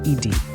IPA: ɪd